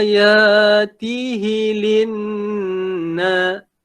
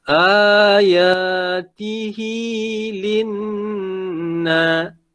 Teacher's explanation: Hi tu panjang 2 harakat. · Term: mad silah qasirah